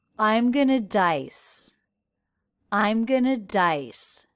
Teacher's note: For example, said, I'm gonna dice. I'm gonna dice, stressing dice.